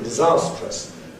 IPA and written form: dɪˈzɑːstrəs (disastrous)